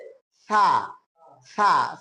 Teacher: সা বলার সময় জিহ্বার আগাটা সামনের দুই দাঁতের আগার সঙ্গে লাগবে।